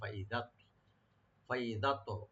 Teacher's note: ত এখানে সাকিন, এখানে আমরা একটু হালকা কলকলা করে এটা আমরা মোটা করে পড়বো।